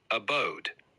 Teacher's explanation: Abode is pronounced Abode with the emphasis on the second syllable